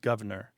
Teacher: You hear governor with that first R dropped